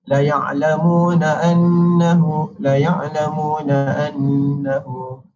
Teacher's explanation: wajib al-gunnah menunjukkan kepada bacaan dengung 2 harakat